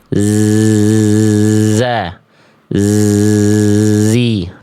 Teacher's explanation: Kalau zai dia berdesis, hanya mengalir suara dan tertahan angin atau nafas, sehingga karakter bunyinya za, zi, tajam ya, kayak lebah. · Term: huruf zai